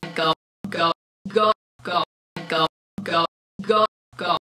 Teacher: Our Australian speaker begins the diphthong with a far more open quality. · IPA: ɐ ʌ ɔ